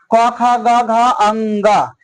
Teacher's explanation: क का उच्चारण स्थान कंठ होता है